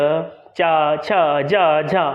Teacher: जो हमारी जिह्वा होती है वह जिह्वा हमारी तालु से टच होती है, इसीलिए ये जो वर्ण है वह तालव्य वर्ण कहलाते हैं।